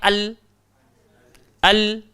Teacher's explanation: Maka wajib menyatakan bacaan tanda sukunnya dengan hujung lidah diangkat menekan pada gusi gigi depan sebelah atas berhampiran makhraj huruf nun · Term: izhar qamariyah